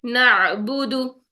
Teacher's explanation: آئین کا مخرج ٹھیک کرنا ہے، وسط حلق میں لے کے جانا ہے، رگڑ کھاتی ہوئی اس کی ساؤنڈ آنی چاہیے · آئین کی آواز کو بھی ہم نے حمزہ کی طرح لا کے ٹھک بند نہیں کرنا، جھٹکے سے بند نہیں کرنا، بلکہ فلو کی طرح اس کو چلانا ہے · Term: آئین ساکن